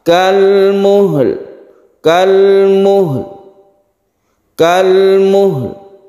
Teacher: Yauma takunus samaa'u kalmuhl. Untuk mewakafkan kalmuhl ini kita sukun lamnya, kemudian harus ada suara lam itu ketika kita wakaf. Kalmuhl. Sepertinya qalqalah tapi bukan qalqalah haknya, jadi dia itu langsung otomatis membentuk lam.